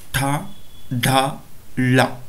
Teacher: ಈ ಅಕ್ಷರಗಳನ್ನು ಉಚ್ಚಾರಣೆ ಮಾಡೋ ಸಂದರ್ಭದಲ್ಲಿ ನಮ್ಮ ನಾಲಿಗೆಯ ಮುಂಭಾಗ ಏನಿದೆ ಅದನ್ನು ಮೇಲ್ಭಾಗದ ತುದಿಗೆ ಸ್ಪರ್ಶ ಮಾಡುವುದರ ಮೂಲಕ ಈ ಅಕ್ಷರಗಳನ್ನು ಉಚ್ಚರಿಸುತ್ತೇವೆ · ತಾಲವ್ಯ ಅಂತೇಳಿದ್ರೆ ನಾಲಿಗೆಯನ್ನು ಹಿಂಭಾಗಕ್ಕೆ ಮಡಚಿ ಮೇಲ್ಭಾಗದ ದವಡೆಯನ್ನು ಟಚ್ ಮಾಡೋದ್ರ ಮೂಲಕ ಈ ಅಕ್ಷರಗಳನ್ನು ಉಚ್ಚಾರಣೆ ಮಾಡ್ತೀವಿ